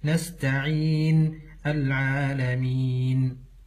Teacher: ومن الأخطاء أن يطبق الشفتين عند حرف النون نهاية الآيات العالمين نستعين فكأنه يقرأها بالميم، والصحيح أن لا يطبق الشفتين حتى ينتهي من حرف النون · ومن الاخطاء ان يطبق الشفتين عند حرف النون نهايه الايات